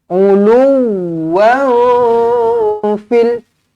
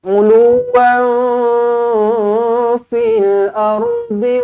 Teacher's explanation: Tanwin tak selari bertemu dengan fa, ikhfa hakiki dengung dua harakat.